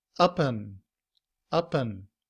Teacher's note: However, in reduced form, and is pronounced un and combined with up, it sounds like upen.